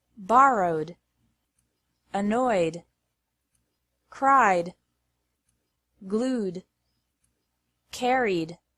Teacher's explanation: e d is pronounced like d after verbs ending in a vowel sound